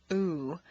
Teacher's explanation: a strong non-reducible sound ooh that is made far forward in the mouth with the lips fully rounded